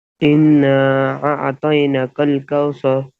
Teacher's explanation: انا نون مشدد میں ہمیشہ گننا ہوتا ہے